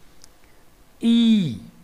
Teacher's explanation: E is a front, unrounded, long vowel just below close position.